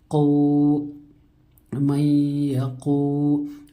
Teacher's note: واو ساکن سے پہلے پیش ہو تو واو مدہ ہوتا ہے، واو مدہ کو ایک الف کے برابر کھینچ کر پڑھیں گے